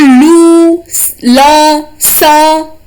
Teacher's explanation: दंत से लू, ल, स, त वर्ग, ये हो गए दंत से